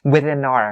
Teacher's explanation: Within ends with an n sound and then our starts with a vowel